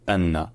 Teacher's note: Puis un n qui est dédoublé, un N qui est long.